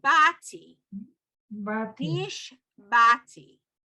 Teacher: And then the ayin is silent.